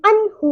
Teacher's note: अन्हु मालूहु, हम अन्हु को आहु नहीं करेंगे क्योंकि नून साकिन के बाद हा हुर्फ हल्किया में से है, इसलिए यहाँ पर इज़हारे हल्की होगा। हम अन्हु को अन्हु इस तरह नहीं पढ़ेंगे और हा को भी आधे अलिफ के बराबर लंबा करेंगे।